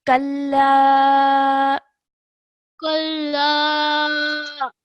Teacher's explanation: the mud on top, we need to elongate the sound out for around 3 seconds